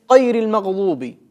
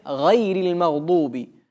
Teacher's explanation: Некоторые заменяют твердую «гайн» на букву «каф».